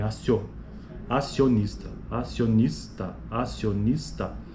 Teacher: o i ele é uma Glide ou seja ele é uma semivogal e o o é a vogal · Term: ditongo crescente